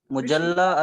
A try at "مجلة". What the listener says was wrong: Majalla, majalla, majalla. but in Arabic it's with fatha. But in Arabic it will be maftuh with fatha.